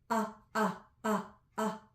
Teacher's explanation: When I close the back of my throat and then release the vowel is whatever the vowel is, but it started with a glottal stop.